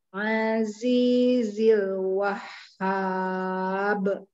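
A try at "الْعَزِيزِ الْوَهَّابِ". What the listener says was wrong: Jangan dinaikkan ya. Jangan Wahhab. Jangan. Itu seperti nadar. Wahhab. Lempang.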